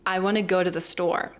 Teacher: the most important parts of that sentence are want, go, and store. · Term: stress timed